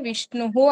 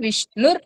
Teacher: మీరు అక్కడ ఆపారు అంటే విష్ణుహు అని వస్తుంది కంటిన్యూ చేస్తే విష్ణుర్ అవుతుంది